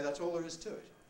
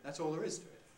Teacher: this phrase, that's all there is to it, is typically said either with the nucleus on the to, or with the nucleus on the is, which again is not exactly expected because that's the verb to be, but we either say that's all there is to it, or we say that's all there is to it.